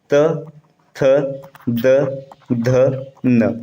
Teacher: जो आपका त वर्ग है इसका उच्चारण स्थान है दंत